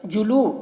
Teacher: لو میں واو مدہ ہے، اسے ایک الف کے برابر کھینچیں گے